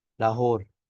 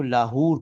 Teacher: لاہور کا درست تلفظ مجہول ہے، لاہور، لیکن اگر آپ عربی میں ادا کریں گے تو اس کو لاہور کہیں گے، لاہور بھی لاہور۔